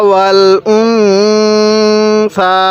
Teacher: এই নুন সাকিনের মধ্যে আমরা গুন্নাহ করব